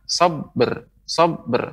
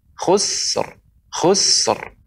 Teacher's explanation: Tapi kalau yang sebelumnya sin khusr, khusr. Karena sin bukanlah huruf qalqalah, jadi enggak bisa dipantulkan. Cuman kita berikan ra di ujungnya